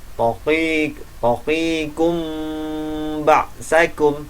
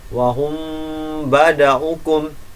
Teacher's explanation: Taqikum ba'sakum. Nah, jadi mim sukun ini agak melebur ke huruf ba. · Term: ikhfa syafawi